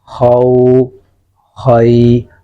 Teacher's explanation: خا زب واو خو خا زب یا خی خو خی. خا موٹا کریں گے، واو کو موٹا نہیں کرنا. خا موٹا پڑھیں گے، یا کو موٹا نہیں کرنا.